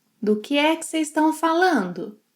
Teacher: she shortens vocês to seis, estão to tão